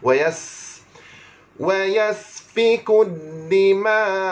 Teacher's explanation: huruf sin ada sifat safir, berdesir maksudnya.